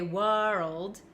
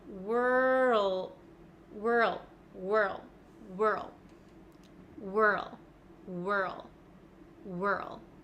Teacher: we kind of skip over the W and go straight to R